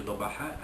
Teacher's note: sukun di tengah kalimah itu hukumnya qalqalah sughra, lantunannya lemah